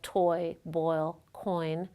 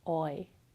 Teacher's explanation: The third major diphthong in English occurs in words like toy, boil, coin. It starts with the tongue at the back of the mouth and the lips rounded, aw, and then moves to the front with lips unrounded, oi. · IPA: [ɔɪ]